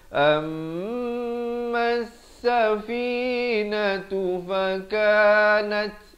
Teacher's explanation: Ada bunyi hamasnya, bunyi nat, itu bunyi angin.